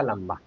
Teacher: यहां पर अनुस्वार का उच्चारण म के रूप में हो रहा है। लंबा यानी आधा म।